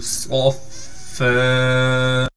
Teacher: فا سے اس لیے ملا رہے ہیں کہ فا پر تشدید ہے، فا پر تشدید ہونے کی وجہ سے تھوڑا ٹھہراؤ بھی کریں گے، اور فا پر 2 زبر ہونے کی وجہ سے جب فا پر وقف کریں گے پھر فا کو ایک زبر دے کر فا کو ایک الف کی مقدار کھینچیں گے۔